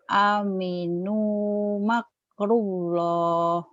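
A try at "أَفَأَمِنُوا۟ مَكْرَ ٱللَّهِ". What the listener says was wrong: Afa aminu makraw bukan makru, makrallah. Afa aminu makrallah.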